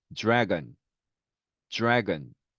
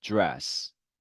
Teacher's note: 이 D 발음의 음가가 R 발음 만나면서 약간 네, 이런 즈 발음이 됩니다. 그래서 드래곤보다는 dragon, dragon.